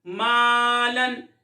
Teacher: مالن میم الف زبر ما لام 2 زبر لن مالن۔ میم کو باریک پڑھتے ہیں تو الف کو بھی باریک پڑھیں گے۔